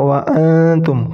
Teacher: Ketika dibaca samar, jadi ujung lidah itu tidak mengenai gigi.